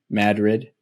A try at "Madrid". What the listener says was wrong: It's like, but you don't emphasize it as aggressively, but it's there's that one.